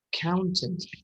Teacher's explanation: This ow sound in the middle is stressed.